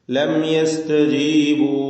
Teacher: മണിക്കാതെ മീമിനെ വെളിവാക്കണം അല്പം പോലും മണിക്കാതെ ഉള്ളതുപോലെ വ്യക്തമാക്കി ഉച്ചരിക്കുക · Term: ഇൽഹാർ ഷഫി